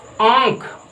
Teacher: जैसे हम आंख लिखते हैं, आंख में देखिएगा आ नहीं पढ़ते, आंख नहीं पढ़ते, आंख पढ़ते हैं। मतलब जो अ का उच्चारण हम नाक के द्वारा कर रहे हैं इसलिए हम इसे क्या पढ़ते हैं, आंख, ना कि आंख।